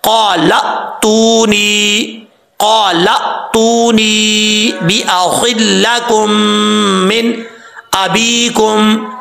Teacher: حمزہ کے اوپر جزم ہے تو یہ حمزہ جھٹکے کے ساتھ پڑھا جائے گا، لیکن جھٹکا کرتے ہوئے قلقلہ نہیں کرنا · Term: حمزہ ساکن